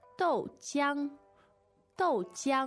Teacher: the tones are Fourth and first.